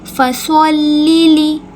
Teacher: صاد کو ہم ہمیشہ پر کر کے پڑھتے ہیں، موٹا کر کے پڑھتے ہیں، کیونکہ صاد حرف مستعلیہ میں سے ہے.